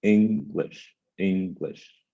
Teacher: english the first syllable is stronger than the second